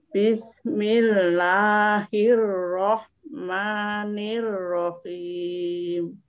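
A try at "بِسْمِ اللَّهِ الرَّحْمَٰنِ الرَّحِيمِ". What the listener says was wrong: Ya, coba sekali lagi, lamnya jangan lah. Bismillah. Bismillah.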